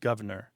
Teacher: You hear governor with that first R dropped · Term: dissimilation